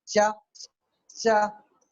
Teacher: पहले रुकते हैं और फिर जो है रगड़ से बाहर निकलते हैं, वो एफ्रिकेट्स कहलाते हैं।